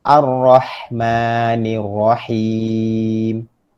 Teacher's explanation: Maka alif lam semuanya mula dengan baris atas. Cumanya pada Ar-Rahmanir-Rahim kita tidak akan dengar bunyi lam. Kita tidak boleh sebut Al-Rahman, Ar-Rahman, Al-Rahmanir-Rahim, tidak ya. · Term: alif lam syamsiah